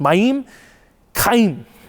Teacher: I don't speak Hebrew, but the way you would pronounce this, and I'm probably going to butcher it, but I'm going to do my best, would be Mayim, because you always put in Hebrew, the emphasis is on the second syllable, so it's Mayim, Chaim.